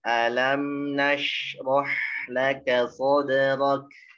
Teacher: Sod tipiskan dal pantulannya, huruf sodnya tetap tebal.